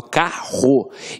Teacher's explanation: esses dois erres aqui tem um som de r forte